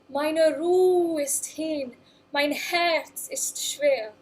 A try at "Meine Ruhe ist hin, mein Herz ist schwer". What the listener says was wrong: So wait a minute, so even when you speak it, mein Herz ist schwer, really close that closed vowel. Rather than mein Herz ist schwer. Meine Ruhe ist hin.